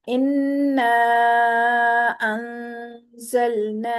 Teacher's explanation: नून मीम मुशद्दद पे गुन्ना होगा, नाक में आवाज रुकेगी।